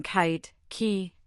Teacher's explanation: Its name is K and its sound is the sharp unvoiced verer pl. You make this sound by raising the back of your tongue to your soft pallet blocking the airflow and then releasing it in a quick breathy burst.